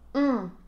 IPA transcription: ɔ̃